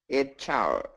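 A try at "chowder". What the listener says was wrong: Perfect job. Great job. Very good.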